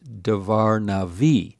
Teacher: the first word loses its accent and the only word that has an accent is the final word